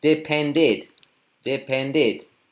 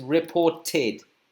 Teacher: Cuando el verbo termina en la T o la D, depend, por ejemplo, entonces aumentamos el id